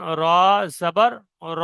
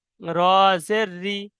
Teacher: পুর মানে রটা একটু মোটা করে আর মুখটা গোল করে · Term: র পুর